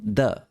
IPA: d